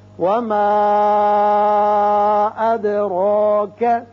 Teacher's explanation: یہاں مد کیجئے، 3 الف کے برابر کھینچیں گے. اد دال کی صفت قلقلہ ادا ہوگی · اد دال کی صفت قلقلہ ادا ہوگی اور را کے اوپر کھڑا زبر ہے، اس کو پر پڑھیں گے